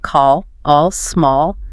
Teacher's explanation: Your lips have to round just a little bit, almost like you're about to say oh. You also hear it in words like thought or caught. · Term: rounded A